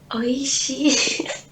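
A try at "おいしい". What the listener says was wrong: Yang di akhirnya oishi, ya, lebih panjang akhirannya.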